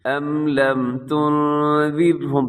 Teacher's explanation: یہاں پھر نون کی آواز کو اپنے ناک میں لے کے جانا ہے، اخفا ہے۔